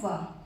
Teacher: दंतोष्ठ, दांत और ओंठों को दोनों को मिलाकर जो वर्ड बोला जाता है उसे दंतोष्ठ कहते हैं, जो होता है व।